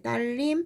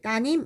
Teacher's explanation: 딸님 이렇게 쓰지 않고 리을이 없어졌어요. 따님 이렇게 얘기하죠. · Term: 리을 탈락